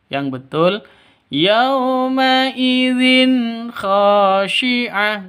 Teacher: Jadi kha itu tanwin bertemu dengan kha, cara bacanya jelas. Tidak boleh dengung. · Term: izhar halqi